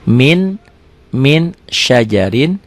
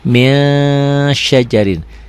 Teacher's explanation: Min ditulisnya dibacanya jadi ming. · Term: ikhfa